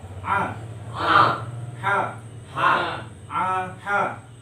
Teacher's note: tenggorokan tengah, adalah tempat keluarnya ain sama ha ya